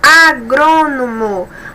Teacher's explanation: a sílaba mais forte é a antepenúltima, então é proparoxítona